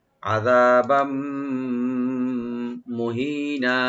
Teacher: আর বার উপর যে তানবিন আছে, তানবিনের পরে যেহেতু মিম আসছে, এখানে ইদগাম উইথ গুন্না হবে।